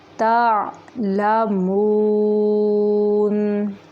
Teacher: مون ناک میں آواز نہیں نکالیں گے، منہ سے نکالیں گے